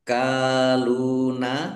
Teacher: kafnya dibaca dobel ada tasdidnya ya. ditekan biar tampak dobelnya. Akkaluna kafat berdiri mad thobi'i.